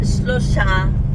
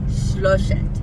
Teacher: The stress is on the O, and then it has an et at the end instead of an a.